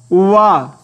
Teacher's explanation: आखिरी देखिएगा, आखिरी 9वां स्थान उच्चारण स्थान बताया गया दंतोष्ठ। दंत और ओष्ठ, दंतोष्ठ से कौन सा वाला उच्चारित होता है, वा। इसका सूत्र दिया गया वकारस्य दंतोष्ठम, वकारस्य दंतोष्ठम।